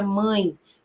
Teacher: Ele serve para nos indicar que aquela sílaba em que ele está posicionado é uma sílaba que tem um som nasal. O som daquela sílaba vai sair pelo nariz. Veja, por exemplo, a palavra mãe, como tem um som aí que é nasal, né?